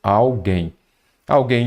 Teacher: como a sílaba tônica é a última, você já vai se lembrar de que, de fato, ela é oxítona, pois é uma palavra oxítona terminada em "em".